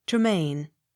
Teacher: Accent on last syllable.